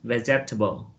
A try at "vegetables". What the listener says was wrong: Okay, it's just vegetables. We don't pronounce e, vegetables.